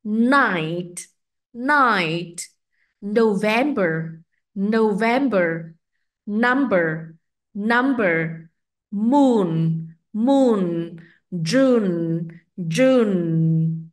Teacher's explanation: cảm nhận cái sự rung động âm thanh ở ba vị trí đó là cổ họng ngạc nướu và ở mũi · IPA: /n/